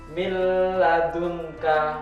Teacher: Nah, jadi langsung masuk huruf selanjutnya cuma tidak mendengung. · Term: idgham bila gunnah